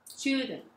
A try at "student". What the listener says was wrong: 예, student. 예.